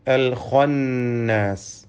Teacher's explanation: ഇതിലെ ഖാഇന് തഫ്ഖീം നൽകി പെരുപ്പിച്ച് സ്വരഭാരത്തോടെ ഉച്ചരിക്കണം.